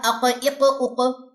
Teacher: یہ بات بار بار ریپیٹ کر رہی ہوں، موٹے حروف کا مطلب یہ ہوتا ہے کہ زبان کی جڑ کا اوپر کو اٹھنا، اور قاف کا مخرج کیا ہے کہ زبان کی جو جڑ ہے وہ اوپر کے جو مقابل اس کا نرم تالو ہے نا، نرم حصہ تالو کا، وہاں کو جا کے لگے گی تو قاف موٹے والا ادا ہوگا